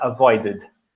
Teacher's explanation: Ele tem um sonzinho de id no final. Esse é permitido.